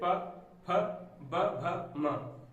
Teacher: ठीक है, इसके बाद ओष्ठ, जिसमें होंठ की सहायता से वर्णों का उच्चारण हो, वो हो जाएंगे ओष्ठ। ओष्ठ व्यंजनों के उच्चारण में दोनों होंठ परस्पर स्पर्श करते हैं और जिह्वा मतलब जीभ निष्क्रिय रहती है